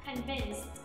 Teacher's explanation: Cái từ convince, nguyên mẫu của nó kết thúc bằng CE, nó sẽ là âm S. Còn ED, nếu mà bạn đứng ở sau âm S thì sẽ tạo thành âm T. Do đó mình sẽ phát âm là convinced.